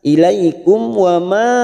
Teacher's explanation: ada mat yang bertemu dengan hamzah di lain kalimat, mat jaiz munfasil 4 harokat